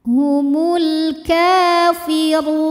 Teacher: huruf ro dibunyikan secara tafkhim karena ro berbaris damah cara membacanya ditebalkan pangkal lidah dinaikkan